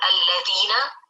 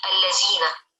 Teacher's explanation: merubah huruf zal ke huruf za